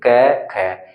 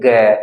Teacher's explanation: ऐसी कुछ मोटी सी आवाज होगी यानी कि कुछ कंपन के द्वारा बोलेंगे आपकी आवाज थोड़ी सी वाइब्रेशन मोड में यहां पर निकलती है · जब हम इनको उच्चारित करते हैं, इनको बोलते हैं, तो हमारी स्वर तंत्रियों में कंपन उत्पन्न नहीं होती। बेसिकली हम इनको बोलेंगे कै ख। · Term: अघोष